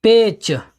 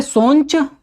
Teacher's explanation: भोजपुरी में स्वरों में अनुनासिकीकरण की प्रवृत्ति पाई जाती है